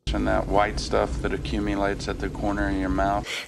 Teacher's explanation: It's kind of sounding more like nat, just because of the sheer speed. The last T in that is pronounced as a glottal T, so it sounds more like that stopping air sound in the throat.